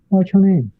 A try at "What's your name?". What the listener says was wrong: What's your name? 여기서 what's 할 때요. 치읓 발음이 나는 것 같았거든요. 정확히 들리진 않았지만 치읓 발음보다는 그냥 쌍시옷, 그러니까 이 t가 없다고 그냥 생각하는 게 좋아요. 그냥 What's your name? What's your name?